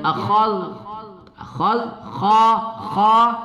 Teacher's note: Nah, itu termasuk huruf hamas. Kha ya, makhrajnya halqi ya, di tenggorokan.